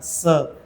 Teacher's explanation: स दंत्य वर्ण येतो, म्हणून स म्हणताना जिभेचा शेंडा वरच्या दाताच्या पाठीमागे लागला पाहिजे